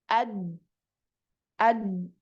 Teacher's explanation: Ad. Nah, ketika mengucapkan huruf dal ini tidak ada aliran suara yang keluar.